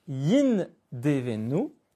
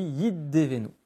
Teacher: Vous aurez remarqué que le Nun est absent. À la place du Nun, on a un Dagesh, une emphase, dans le Dalet.